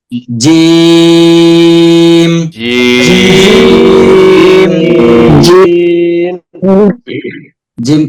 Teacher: এখন আমরা জিম পড়তেছি, জিম হবে শক্ত। জিম, জিম কিছুটা মোবাইলে ভাইব্রেশন থাকলে যেমন কাঁপে ওরকম কিছুটা হবে, ওরকমের কিছুটা হবে, আমরা খেয়াল রাখবো।